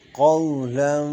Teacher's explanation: قو کی واو لین ہے، اس کو کھینچیں گے نہیں